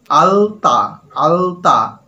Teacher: উপরের যে মাড়ি, দাঁতের পাটি, সেই গোড়াকে স্পর্শ করছে এবং জিভটা কিন্তু এগিয়ে গেছে। আলতা, জিভ কিন্তু এগিয়ে গেছে, লয়ের উচ্চারণ স্থান কিন্তু অন্যরকম হয়ে গেছে।